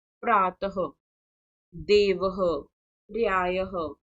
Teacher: विसर्ग का उच्चारण कंठ से होता है इसके उच्चारण में ह की ध्वनि निकलती है जैसे प्रातः देव विवः प्र्यायः ठीक है तो यहां पर जहां पर विसर्ग लगे होते हैं वहां पर हम ह का हल्का सा प्रयोग करते हैं।